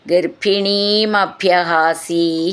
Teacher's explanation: ഗർഭിണി എന്നുള്ളതിന്റെ പിന്നും അഭ്യഹാസി എന്നുള്ളതിന്റെ ഭ്യാന്നും നന്നായിട്ട് ഊന്നി പറയണം